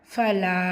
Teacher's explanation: மத்தை தொடர்ந்து அடுத்த வார்த்தை தொடக்கத்தில் ஹம்சா இருக்கிறனால இது மது முன்ஃபசில் 4 ஹரக்கத்தளவு நீட்டம் கொடுத்து ஓதணும்